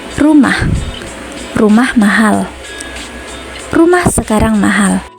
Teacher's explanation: Kalimat berita atau deklaratif ditandai dengan pola intonasi datar turun.